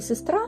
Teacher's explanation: у слові сестра ненаголошений звук е уподібнюється до звука и